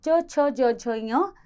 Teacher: तालव्य नाम से स्पष्ट है, तालु से बोले जाने के कारण जो वर्ण हैं वे हैं च छ ज झ ञ, इसीलिए इन्हें तालव्य नाम दिया गया।